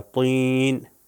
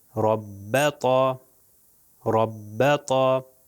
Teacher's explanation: توئیں جو ہے اس کو موٹا تلفظ کیا جاتا ہے، وہ بھی اوپر والے دانتوں کے پیچھے سے، مگر زبان کا جو پیچھے والا حصہ ہے وہ تھوڑا کرو ہوتا ہے، کہ جس کی وجہ سے اس کو موٹا اور ہیوی تلفظ کیا جاتا ہے۔